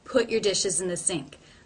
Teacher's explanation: I don't release the T before I make the P sound.